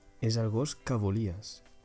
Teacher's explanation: Que volies sounds like it is just a word, que volies, and not two separate ones, so it just rolls out of your tongue very easily. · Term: unstressed form